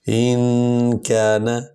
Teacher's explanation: آرائیتا ان کان، الف سے نون ان، یہ جزم والا حرف ہے، پچھلے حرف کے ساتھ مل کر پڑھا جائے گا۔ ان کان، کاف کو ہم ہلکا پڑھیں گے اور نون پر زبر ہے، کانا بھی نہیں بنائیں گے